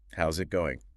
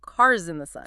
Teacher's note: The S in house links to the I in it. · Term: S to Z linking